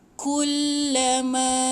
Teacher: Kullama ma panjang 4 atau 5 harakat. Ingat ada ombak, lepas tu hamzah, confirm 4 atau 5 harakat.